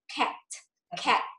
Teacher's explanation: Cờ đầu và tê cuối đầu là âm ra hơi.